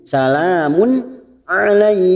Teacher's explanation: namanya bacaan idhar halq dibaca jelas tanpa mendengung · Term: idhar halqi